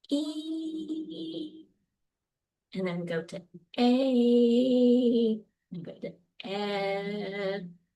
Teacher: my mouth's gradually opening and my jaw, right? Dropping as I go from high to low. And you could feel your tongue again um moving to these different positions.